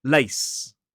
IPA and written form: leɪs (lace)